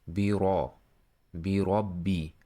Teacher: This is letter ba, then there is e here, and letter ra here, there is tafhim. Tafhim means you should bold the voice here. The sound should be much thicker, not light. Bi ra, bi rabbi, then doubling the b.